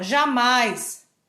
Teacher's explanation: Porque o A que é a vogal. O I, ele é pronunciado mais fraquinho, porque ele é semivogal.